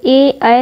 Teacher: ए ऐ हमारा कंठ तालु से उच्चारित होता है